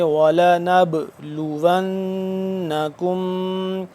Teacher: نب نون با زبر نب، اس کو قلقلہ کریں گے